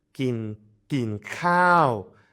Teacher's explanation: kin khao is falling long